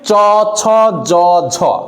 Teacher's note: আপনার দাঁতের শেষে তালুতে যে লাগতেছে জিহ্বাটা, ফলে এটাকে বলা হয় তালব্য ধ্বনি।